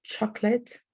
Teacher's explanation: you know it looks like it has three syllables but actually the middle syllable here is like reduced to zero · sometimes the uh is skipped completely because it's so reduced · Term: schwa